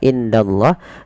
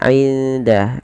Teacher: Cara membacanya menyamarkan suara nunnya kepada huruf dal. Tidak dibaca indallah, tapi dia inda. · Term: ikhfa